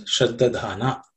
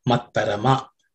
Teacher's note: The visarga at the end also gets dropped because of sandhi.